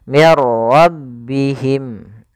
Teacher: masukkan nunnya kepada huruf ra sehingga suara nunnya hilang, langsung terbaca dengan jelas suara ra-nya. Mir ra. Karena dia bila gunnah tanpa disertai dengan gunnah, maka dia tidak boleh ditahan. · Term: idgham bila gunnah